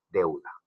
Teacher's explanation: En deuda observamos nosotros que hay un diptongo porque suena más la vocal abierta, deuda. Ahora, en los triptongos tenemos tres vocales en la misma sílaba.